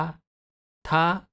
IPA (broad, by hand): ta